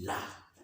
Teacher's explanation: जीभ का अगला भाग मसूड़ों को छूता हो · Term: पार्श्विक